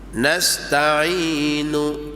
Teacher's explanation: Waktu kita sebut nu, mulut kita tak muncung, lidah kita aja tarik masuk dalam. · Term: bacaan raum